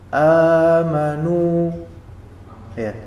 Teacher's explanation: nun dhammah ketemu dengan waw mati, maka dia menjadi juga mad tabi'i. Amanu ya, dua harakat.